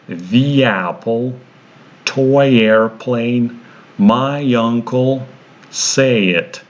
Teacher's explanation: In all these examples we see that the linking or the glide consonant between the 2 vowels is a Y. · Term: Y glide consonant